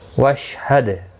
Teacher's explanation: دال ساکن پر قلقلہ ہوگا، شین پر قلقلہ نہیں ہونا چاہیے